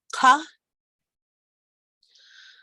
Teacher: that's further back in the throat than an English Q